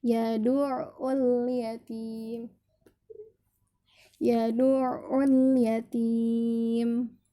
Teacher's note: Yadu' dimasukkan. Yad'ul dimasukkan tapi dialirkan. Jadi jangan dihentak, jangan diadu'ul, tapi yad'ul yatim.